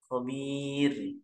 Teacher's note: Nah, di ayat yang terakhir selain mad arid li sukun uh, pada kalimat la khabir, nah ro-nya di situ dibaca tipis karena didahului oleh mad asli yang kasroh bir dan bukan pula huruf isti'la.